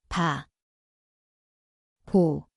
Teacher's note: Ia berbunyi seperti B garis miring P. Tempatnya adalah kedua-dua bibir. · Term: huruf puk